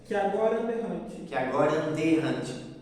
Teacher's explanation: Tu comeu o som do a · 2 A's se juntam num só e fica com um único som. Então, que agora, e depois o mesmo vai acontecer com aquele da e aquele e. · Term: crase